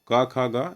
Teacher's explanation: ये का वाली जो पंक्ति होती है सारी कंठीय होती है